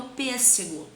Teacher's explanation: Então, a sílaba tônica é a antepenúltima.